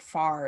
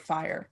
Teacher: We get things like monophthongization of I before R.